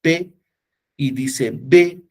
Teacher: Si usted dice P y dice B, se juntan los dos labios. Ambos son oclusivos porque al decir P y al decir B se cierran, ¿no?, los órganos de la articulación, pero la P es sorda y la B es sonora. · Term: bilabial